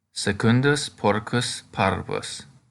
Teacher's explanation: Because secundus has a double consonant, the stress comes on the second syllable.